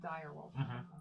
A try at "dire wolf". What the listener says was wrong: There's a little bit emphasis on die.